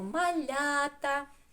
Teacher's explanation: ми чуємо тільки звук а після м'якого приголосного